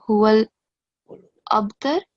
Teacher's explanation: make sure on ba that you do kalkala. So a jerking sound.